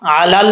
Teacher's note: اچھا جی، علل، اب لام کے بعد لام ہے، لام ساکن، یہاں پہ پڑھتے وقت قلقلہ نہیں کرنا، علل، علل نہیں پڑھنا، ایک تو عین کو عین نہیں پڑھنا ہے، حمزہ نہیں پڑھنا، دوسرا لام میں قلقلہ نہیں کرنا۔